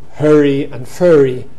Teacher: in many American dialects they have merged to hurry and furry, so that is called the second nurse merger in America.